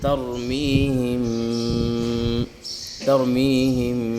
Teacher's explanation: ناک میں آواز بھی چھپ رہی ہے، 2 سے 3 سیکنڈ تک آواز کو چھپایا جا رہا ہے، تو اس کو کہتے ہیں اخفاء شفوی۔